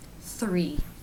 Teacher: For the THR consonant cluster, the lips will begin to move into position for the R while the TH is being made.